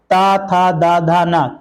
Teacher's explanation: जब आप इनका उच्चारण करते हैं तो आपकी जीभ जो है आपके दांत को टच करती है।